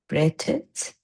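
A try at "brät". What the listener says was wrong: Yeah, that would be if braten would follow the rules. Unfortunately, this is the one of maybe the only exception where it doesn't get an extra T. But the umlaut was the important part.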